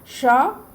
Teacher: और ये मूर्धन्य श, क्योंकि हम जीभ को घुमा के इसको उच्चारण करते हैं